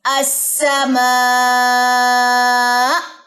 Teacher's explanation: اگر آپ نے اس حمزہ کی حرکت کو ڈراپ کرنا ہے تو اس کے اوپر آ جائے گی جزم، اور جزم کی صورت میں آپ نے یہاں پہ ایک جھٹکا سا، ایک جگ سی آواز کو اوپر کی طرف لے کر جانا ہے، یعنی کہ یہاں پہ آپ نبر کریں گے